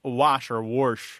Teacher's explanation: He's got an R insertion thing happening.